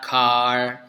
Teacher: bunyi k itu bunyi yang tidak bergetar